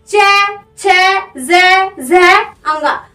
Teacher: जो हमारी जीभ है वो दांत के पीछे जो तालु होता है उसे टच करती है